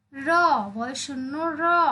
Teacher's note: র উচ্চারণ করতে গেলে জিহ্বা কিন্তু কেঁপে ওঠে, তাই একে কম্পিত ধ্বনি বলা হয়